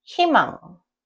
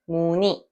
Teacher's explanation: when the double vowel 의 syllable has an initial consonant, the sound changes from 의 to e